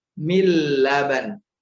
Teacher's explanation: min laban masuk nun sukunnya masuk ke huruf lam langsung.